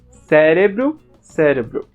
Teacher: o E aparece mais fechado